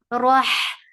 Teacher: give takrar in ra and make ra heavy because there is fatha on it, and attached with ha.